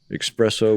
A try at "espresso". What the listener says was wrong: espresso. Espresso. Espresso.